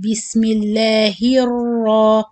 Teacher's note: give also tiny running in the ra sound. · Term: running of the sound